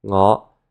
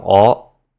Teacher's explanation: words that start with an ng sound will drop that sound, so that it starts with a vowel instead